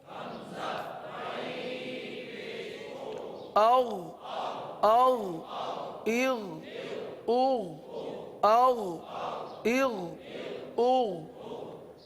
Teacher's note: غین ہے حلق کے اوپر والے حصے سے ادا ہوتا ہے، غین کو پر ادا کرتے ہیں.